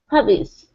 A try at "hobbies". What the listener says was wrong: Open it up wide for an ah sound instead of ha. Hobbies.